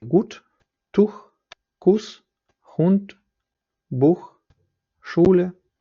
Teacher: коли у стоїть у слові має довгий звук вона вимовляється як у це глибокий закритий голосний подібний до українського але довший